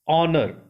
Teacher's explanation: Honor sounds like honor. That H will become silent.